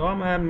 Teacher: নুন সাকিনের পরে ইদগামের হরফ মিম আসার জন্য গুণ হবে